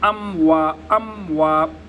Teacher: میم چونکہ حروف قلقلہ میں سے نہیں ہے لہٰذا میم کے اوپر قلقلہ نہیں کیا جائے گا۔ ام وا، میم کو ٹھہراؤ کے ساتھ پڑھیں گے۔